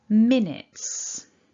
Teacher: Okay, so top tip, don't say the U, it's just a short I in minutes